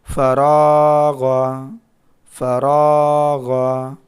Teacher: الف سے پہلے زبر ہے یہاں پر، تو را کو تھوڑا کھینچ کر کے پڑھیں گے کیونکہ یہاں پر الف مدہ ہے